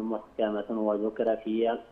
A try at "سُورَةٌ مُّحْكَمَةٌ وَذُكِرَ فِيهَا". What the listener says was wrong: لا، سورة إدغام بغنة. بالراحة وحافظ على أحكام.